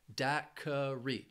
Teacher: Daiquiri has three syllables and the stress is on that first syllable. Daiquiri. This word can be confusing because that Q-U-I can throw people off.